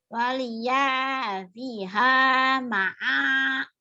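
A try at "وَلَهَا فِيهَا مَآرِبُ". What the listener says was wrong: Udah bener, udah tinggal panjang pendeknya di sini ya nih. Yang panjang piha sama ma'a. Yang panjang cuma 3 tuh.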